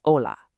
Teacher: what's really interesting here is that the H is totally silent. It's literally just hola.